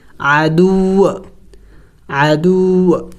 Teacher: وقف میں ہم نے اس واو کو سائلنٹ کرنا ہوگا، یعنی ساکن کرنا ہوگا